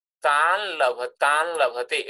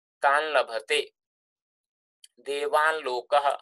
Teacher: So lakara becomes nasalized. So nakara changes into nasalized lakara.